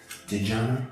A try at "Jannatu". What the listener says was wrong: So it's actually Jannatu. Think of Django, D and the J. Django, Djibouti. There's no D. The D. That's why it's quiet D, because the D is silent.